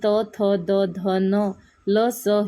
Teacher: जो वर्ण उच्चारताना जिभेचे टोक वरच्या दाताच्या मागच्या बाजूस टेकते त्यास दंतवर्ण म्हणतात